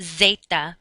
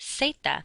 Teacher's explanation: the letter Z does not make a buzzing sound like it does in English. You just pronounce it like an S.